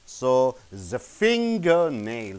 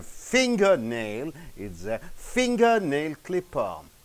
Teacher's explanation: So, finger is more intonated, more stressed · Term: stress on the first noun